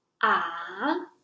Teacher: it is a low tone that falls to the lowest the level and then turn to a higher level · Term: third stone